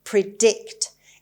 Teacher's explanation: It's a verb and the stress is on the second syllable, on D. Predict.